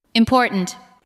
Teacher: The second part receives the strongest beat. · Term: word stress